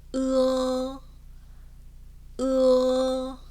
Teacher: 으에서 어로 소리가 연결되면서 가볍게 마무리해 주시면 돼요